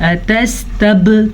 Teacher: با کے اوپر کلکلا ہو رہا ہے کیونکہ با حروف کلکلا میں سے ہے